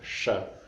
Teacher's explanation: nós colocamos a língua numa posição retroflexa pouco para cima